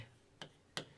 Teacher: लय बोलते हैं तो जीभ के दोनों बगल से वायु बाहर निकल जाती है, लय। ठीक है। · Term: पार्श्विक